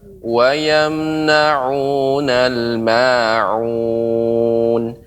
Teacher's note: pengucapan terakhir untuk ma'un tidak jangan terlalu panjang. Ma'un, akan tapi cukup ditekan dua harokat.